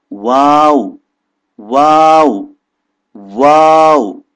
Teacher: یہاں پہ یہ ہے کہ جب آپ کہیں گے تو یہ ہونٹ شروع ہوں گے گولائی سے، پھر پھیل جائیں گے وا، اور آخری واو لانے کے لیے دوبارہ سے گول ہو جائیں گے